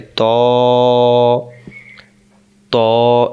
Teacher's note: ত অক্ষর জিহ্বার আগা থেকে মোটা করে পড়তে হয় আমি আপনাদেরকে বলছিলাম মোটা মানে জিহ্বার না মুখটা কি হবে গোল